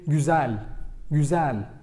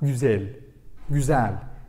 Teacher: Did you notice I say güzel, güzel, like open E, not güzel, güzel.